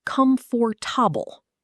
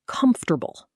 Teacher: Tip, not com-FOR-ta-ble. The middle syllable almost disappears. Comfortable.